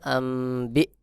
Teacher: নুন সাকিনের পরে বা ইকলাব গুন্না হবে সহি উচ্চারণ হবে আমবি হা মিম পেশ হুম আম বা জের